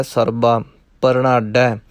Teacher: ਇਹਨੂੰ ਸਰਬਾ ਨਹੀਂ ਕਹਿਣਾ, ਸਰਬਾ ਬੱਬਾ ਲੱਗਾ ਹੋਇਆ, ਭੱਬਾ ਨਹੀਂ, ਪੋਲਾ ਰੱਖਣਾ ਹੈ